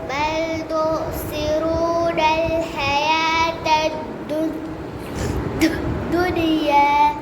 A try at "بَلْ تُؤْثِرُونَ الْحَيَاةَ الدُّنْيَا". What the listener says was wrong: कलकला ना हो बल तुसिरून الحياة الدنيا